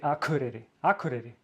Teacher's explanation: the K when I pronounce it, it sounds like G, at least in Icelandic